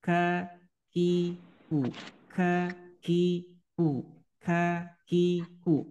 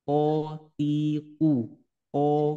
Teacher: bedakan kalau Kaf itu ada udara yang keluar disebut dengan sifat Hames · Kalau huruf kaf keluarnya dari pangkal lidah dengan langit-langit, tapi letaknya lebih bawah daripada makhraj qaf. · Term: sifat hamas